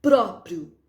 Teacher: Próprio, pró é mais forte. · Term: sílaba tônica